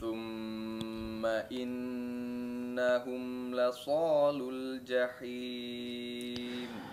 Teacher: Ini termasuk gunnah yang paling sempurna ya, yaitu dalam kondisi nun dan huruf mim yang bertasydid.